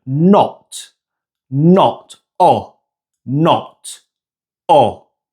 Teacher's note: If you focus on the shape of your lips when saying the word not, you can see that the lips are rounded when you pronounce the O sound. This is the only way that the Spanish O is pronounced. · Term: short O sound